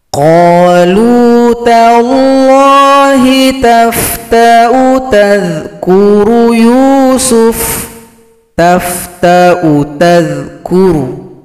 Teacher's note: Hamzah dengan dammah, yang dibaca sebagai hamzah dengan wau. Hamzah biasanya panjang jika bertemu dengan sukun wau , tetapi di sini bertemu dengan alif, sehingga dibaca pendek.